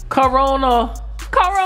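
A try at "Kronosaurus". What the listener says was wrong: Saurus. Oh, no, it doesn't say Corona, it's Cronosaurus.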